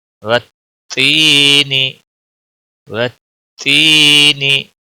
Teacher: یا ساکن سے پہلے زیر ہے تو اس کو ایک الف کے برابر کھینچ کر پڑھیں گے. نون کے نیچے زیر ہے، باقی کسی بھی حرکت کو کھینچنا نہیں.